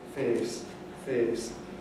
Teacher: In the north of England and in various other places, you can get monophthong instead of the diphthong A. So for the word face, instead of fa, you can get the monophthong A, face, face.